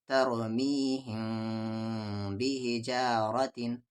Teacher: میم ساکن کے بعد اگر با آ جائے تو تو میم ساکن ہے، میم ساکن کے بعد با ہے تو غنہ کے ساتھ اخفا ہوگا